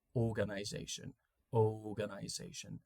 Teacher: we don't really say the R in in at least the RP accent, the received pronunciation accent in British English.